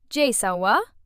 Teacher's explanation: She just says Jay's name plus wa with a rising tone.